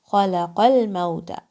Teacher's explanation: Kha is heavy, lam is light, and qaf is again heavy.